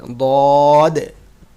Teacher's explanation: শেষের দিকে একটু তোমার কলকলা হবে ধাক্কা দিয়ে